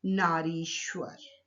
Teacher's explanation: नारी शब्द का अंतिम वर्ण है ई और ईश्वर शब्द का प्रथम वर्ण है ई। तो दोनों दीर्घ ई मिलकर दीर्घ ई बन गए।